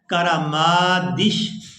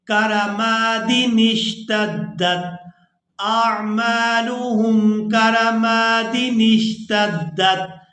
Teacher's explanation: دال کو اپنی حرکت یعنی زیر کے ساتھ ادا کرنا ہے اور پھر نون کو اپنی حرکت یعنی زیر کے ساتھ آگے شین ساکن کے ساتھ ملائیں گے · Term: چھوٹا نون